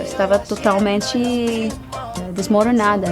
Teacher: It's interesting how she uses a very common Brazilian accent in totalmenTCHI instead of saying totamenTE